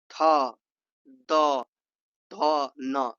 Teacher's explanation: इसमें दांतों के पास जो कि जीभ लगाकर किया जाता है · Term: दंतीय